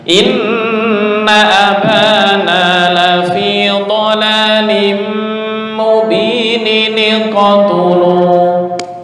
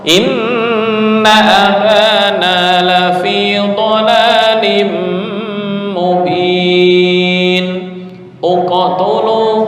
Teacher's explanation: berhubung ada 2 huruf yang mati, nun mati, kemudian bertemu hamzah wasal juga mati, maka harus ditolong dengan harokat kasroh supaya meringankan.